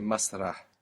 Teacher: We must hear that breathy H on the end there